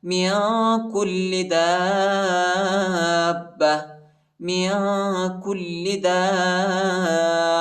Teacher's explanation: دال کے بعد جو الف ہے، اس الف پر بڑا مد ہے، اس کو تقریباً 3-4 سیکنڈ تک کھینچے کے اور با پر شد آیا ہے، ٹھیک ہے.